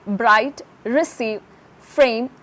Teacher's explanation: or Trill in the production of a roll or a Trill the tip of the tongue strikes against the hard pallet either once or repeatedly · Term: roll or Trill